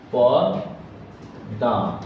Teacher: ম থাকার কারণে এই যে শেষের যে স্বরধ্বনিটার উচ্চারণ সেটা নাসিক্য হয় যে পদ্মা, ঠিক আছে না, পদ্মা।